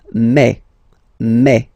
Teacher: when you combine this a and then e vowels you get the sound a e so really open E